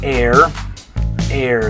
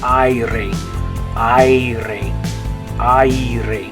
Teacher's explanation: in Spanish, it's going to be an A mixed with an E sound because you have the I right next to it.